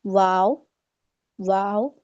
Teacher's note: वाव में होठ गोल हो जाते हैं।